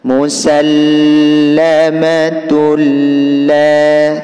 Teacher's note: Sama seperti ini, namanya idgham bila gunnah, diidghamkan tanpa dengung. Bunyi tak dimasukkan terhadap lam. Musallamatul la, ini namanya diidghamkan, memasukkan bunyi tak terhadap lam.